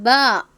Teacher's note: നോക്കി എഴുതി പഠിക്കുക ഒരു പുസ്തകവും പേനയുമായി ഇരിക്കേണ്ടതാണ് ഇത് ഉച്ചരിക്കേണ്ട രൂപം ഇങ്ങനെയാണ് രണ്ട് ചുണ്ടുകളുടെയും നനവുള്ള ഭാഗം ഉപയോഗിച്ചുകൊണ്ടാണ് ബ എന്ന അക്ഷരത്തെ പുറപ്പെടുവിക്കേണ്ടത്